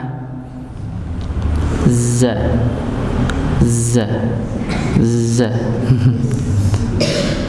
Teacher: Za dan sin sama nggih. Jadi ujung lidah bertemu dengan gusi bagian bawah, za. Ya, ini tidak sampai menyentuh.